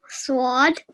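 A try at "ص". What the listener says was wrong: Well, you made it thick, which is good, but try and take out the what that I heard in there. It's just a simple sword.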